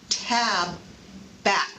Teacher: the tongue stays behind the teeth touching the alveolar ridge and is not released to cause an explosion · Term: unreleased t